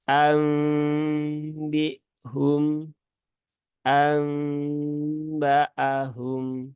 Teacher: nunnya dirubah menjadi mim tetapi mimnya itu mim yang lunak ya bukan mim yang kuat karena ini juga berhubungan dengan sifat ya karakter dari huruf mim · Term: iklab